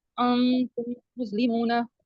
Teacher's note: वाव साकिन से पहले पेश आ गया तो ये वाव मद्दा है, इसको थोड़ा 2 हरकत के बराबर इसको लंबा करेंगे